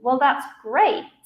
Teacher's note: the first time I said it, I used a rising intonation